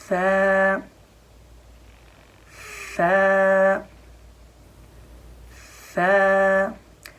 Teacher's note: سا کا مخرج ہے زبان کی نوک اور اوپر والے دانتوں کے کنارے، اوپر والے دانتوں کی بھی نوک، دیکھو زبان باہر لانی ہے، زبان کی نوک باہر لا کر اور اس کے اوپر دانت رکھنے ہیں، ٹھیک ہے۔